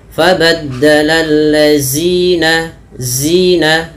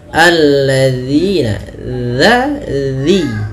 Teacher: sering terjadi kesalahan adalah dengan mengganti huruf dzalnya dengan huruf zai